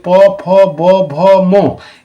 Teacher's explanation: সব ঠোঁট মানে অষ্ঠ মানে হচ্ছে ঠোঁট এই ঠোঁটকে স্পর্শ করছে দুটো ঠোঁট একে অপরকে স্পর্শ করছে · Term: অষ্ঠ ধ্বনি